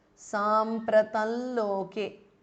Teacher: So the Anuswara changes to the nasal of la.